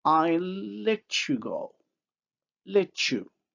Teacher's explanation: the alveolar t becomes the palatal-alveolar affricate ch